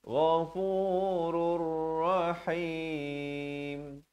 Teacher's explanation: Innallaha ghafurur. Idgham bila gunnah. Asalnya ghafurun. Datang ra jadi ghafurur.